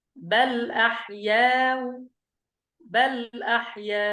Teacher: يعني أتينا بجزء من الضمة مع تسهيل الهمزة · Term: التسهيل مع الروم